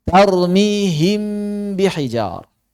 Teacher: tidak menyalahi cara mengikhfakan mim dengan merapatkan bibir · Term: mim ikhfa